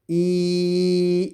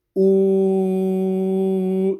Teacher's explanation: We're going to say E, it is not rounded, but we say ooh, it is rounded or pursed.